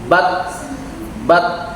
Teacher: huruf Ta ini punya sifat suaranya tertahan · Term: suara tertahan